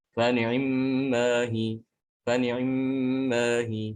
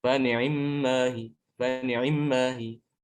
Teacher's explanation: Adapun riwayat lain ada yang membaca dengan ikhtilas, mengikhtilaskan kasroh ain. Ainnya itu dibaca cepat.